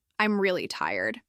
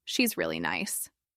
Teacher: Listen carefully to how the re part becomes soft and quick.